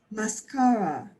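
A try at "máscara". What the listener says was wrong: And now you want to punch the first mascara. It's got an accent mark because, yeah, if I had no written accent mark there, it would sound like mascara.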